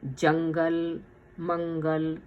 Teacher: یہاں جنگل میں نون جو ہے وہ ناک میں چلا جاتا ہے اور جنگل گاف کے اوپر زبان رکھ کے نکالتے ہیں۔ جنگل، منگل، جنگ، دنگ، چند، ہند۔ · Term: اخفا